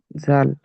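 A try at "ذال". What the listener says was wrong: জাল নয়, জালের নোক্তা আছে, এর নোক্তা নেই মানে দাল। দাল।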